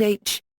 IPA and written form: ˈeɪtʃ (aitch)